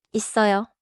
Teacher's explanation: Close briefly, then release into the strong sound before 어요.